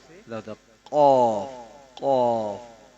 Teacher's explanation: زبان کی جڑ اور لحاظ کے مقابل تالو سے نکلتا ہے